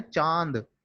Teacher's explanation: जब हम चांद बोलते हैं तो वायु जो है, हवा जो है, वो मुंह के साथ साथ नाक से भी निकलती है। तो अनुनासिक के प्रयोग में मुख और नाक दोनों का प्रयोग होता है, इसलिए इसको अनुनासिक कहा जाता है।